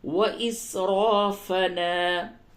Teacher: را کو پر کر کے پڑھیں گے